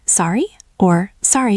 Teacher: It is short and effective with a rising intonation.